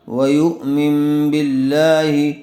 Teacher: نون ساکن کو میم سے بدل کر غنہ اور اخفا کے ساتھ پڑھیں گے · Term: اقلاب